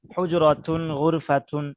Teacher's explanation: একটি কামরা, একটি কামরা তো আরাবিয়ানরা ওই গুলতা আছে না, শেষে তাটারে একটু মানে বাতাস বের করে উচ্চারণ করে